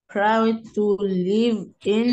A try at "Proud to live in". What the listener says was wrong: Live, not leave.